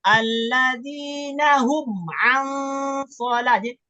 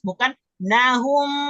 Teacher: Mim sukun bertemu dengan huruf ain, maka dibaca jelas, sejelas-jelasnya ya. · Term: izhar safawi